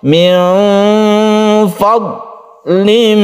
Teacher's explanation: banyak sekali orang membaca dot itu diqalqalahkan, padahal dia itu tidak mempunyai sifat qalqalah. Jadi jangan dipantulkan, ditahan ya.